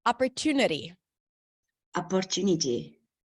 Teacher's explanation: primary stress is on the syllable just before the suffix.